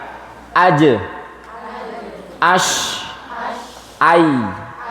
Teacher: pertengahan lidah naik ke pucuk. Huruf jim, shin, ya.